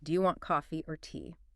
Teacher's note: It rises on coffee, the first option, then falls on tea, the final option. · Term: Either questions